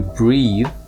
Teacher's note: breathe with an e at the end is the verb and you pronounce this with a long vowel